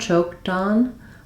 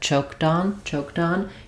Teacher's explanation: we have kind of a light flap sound, choked on, where I'm not using a full D, not choked on, but choked on, choked on.